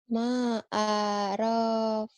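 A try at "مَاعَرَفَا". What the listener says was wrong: Ma'arofa. Panjang, awal sama akhir. Diulang. Jangan dikentek-kentek, jangan. Ma'arofa. Jangan ditekan-tekan kecuali ada hamzah di hurufnya ya. Ada hamzah mati baru muqsadah. Ini jangan ditekan. Ngalir aja. Ma'arofa.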